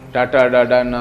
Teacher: ಟ ಅಂತ ಹೇಳುವಾಗ ನಾಲಗೆಯ ಹಿಂಭಾಗ ಹೋಗಿ ಪ್ಯಾಲೆಟ್ಗೆ ತಾಗ್ತದೆ